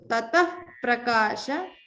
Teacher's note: remember to pronounce the upadmaniya after tataha. So tatah prakasha, because there is a pa in the next word.